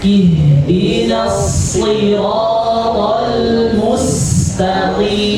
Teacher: huruf isti'la itu huruf shad ya, tebal ya, isti'la. Pangkal lidahnya diangkat. Ketika berharokat kasra masih dalam keadaan tebal.